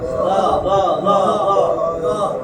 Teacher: নরম করে জিহ্বার আগায় দাঁতের আগে লাগবে